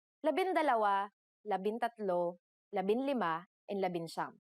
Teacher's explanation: However, NG sometimes changes its form depending on the letter that follows it. For the letters D, L, R, S, and T, the G from NG is dropped to make it easier to pronounce.